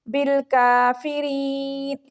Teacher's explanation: بالکافرین، چھوٹا کاف ہے، منہ والی سائڈ سے اس کو باریک کر کے پڑھیں گے. را کے آگے یا مدہ ہے، اس کو 1 سیکنڈ کے لیے لمبا کریں گے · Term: باریک کاف